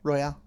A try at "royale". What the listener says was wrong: He said Royale. It's a battle royale, not a battle royal. No, it's a battle royale. There's an E at the end.